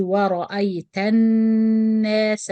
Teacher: So I say الناس. But وصلا, we join the ta with the nun direct and we don't pronounce همزة الوصل or لام شمسية. Both of them will be dropped. So we say ورأيت الناس.